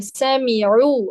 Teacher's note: पेश में हमने पढ़ा है होठों को गोल कर देंगे हम, तो आप जैसे ही आइन पढ़ेंगे आपके होंठ गोल हो जाएंगे।